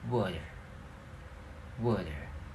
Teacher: The A vowel in words like water will sound a bit more like a schwa sound.